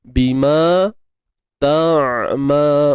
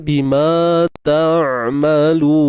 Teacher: Untuk huruf ain ni dia ada sifat tawassut, ya. Suara yang tidak terlalu terlepas dan tidak terlalu mengalir. Dia tengah-tengah.